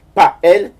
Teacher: Une sorte de H. Ou bien une consonne glottale.